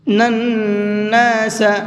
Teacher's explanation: نون کے اوپر تشدید ہے تو یہاں پر غنہ کریں گے